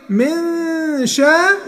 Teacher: يبقى هنا برضه هتقول من شاء، والشين فتحة شاء ما تقولش شا. احنا قلنا الميزان بتاعنا ألف فتحة ب فتحة با، شين فتحة شاء، عمرها ما تيجي شا.